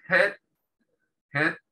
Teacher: en inglés la h generalmente se pronuncia como una jota muy suave se pronuncia como una jota aspirada